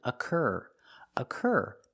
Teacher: Occur, the first syllable is not stressed, so it makes the relaxed sound, like cup and up. Occur. The sound is like burger.